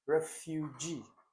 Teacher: Okay, so fu has the longest stress on it in this particular word.